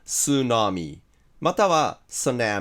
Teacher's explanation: 英語の発音は tsunami または tsunami みたいに音は S なんですよ